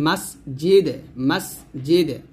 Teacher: জিম জিব্বার মধ্যখান উপতালের সঙ্গে লাগিয়ে উচ্চারণ করবেন, যা যেন না হয়ে যায়, মাস জিদ যেন না হয়ে যায়, হবে মাস জিদে, মাস জিদে।